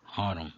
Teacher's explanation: palavra de 2 sílabas, acento na primeira.